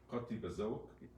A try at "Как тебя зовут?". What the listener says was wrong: Как, just a K.